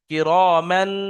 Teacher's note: তানমিনের আওয়াজকে নাকে তুলে 1 আলিফ পরিমাণ গুণনা করতে হবে